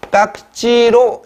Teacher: 무성음과 무성음이 만났기 때문에 깍지로 실현이 되는 거죠. 경음으로 실현되는 것.